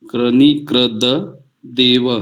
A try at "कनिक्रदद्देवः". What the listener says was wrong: क्रनी नहीं, सुनिए ना, क्रनी नहीं है, कनि, कनि क्र दद देवः।